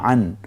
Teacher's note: অকে আকার দিয়ে আইনের একক অ গলায় চাপ দিয়ে বলবো